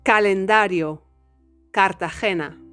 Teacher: the sound k in Spanish, as I've told you in the initial tips, doesn't have an aspiration